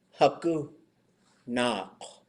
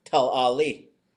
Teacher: They would substitute where we would expect an N sound with a voiced L.